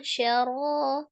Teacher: Ra-nya mad tabi'i ya, dibaca tebal